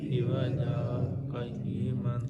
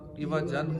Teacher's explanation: متحرک کو ساکن کیا جائے گا اور 2 زبر کو الف سے بدل کر پڑھیں گے. جیسے ایوا جن ہے نا، تو ایوا جن کو ایوا جا پڑھیں گے، ایوا جا قیما.